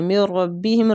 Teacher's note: نون ساکنہ کے بعد را آتا ہے تو ادغام بلا غنہ، مطلب غنہ کے بغیر ادغام